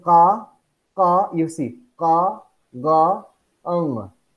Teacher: velar, the body of the tongue approaches or touches the soft palate. Or velum, as in k, gay, eng.